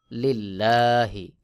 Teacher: এই লামকে পাতলা করে পড়তে হবে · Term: বারিক বা পাতলা করে পড়া